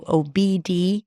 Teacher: Then 'bee' - high 'ee', and then another high 'ee' in the next syllable - 'dee'.